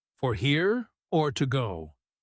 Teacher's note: That phrase usually has a rise on the second option, to go